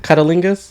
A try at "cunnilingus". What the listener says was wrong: Did you purposely add that T in there?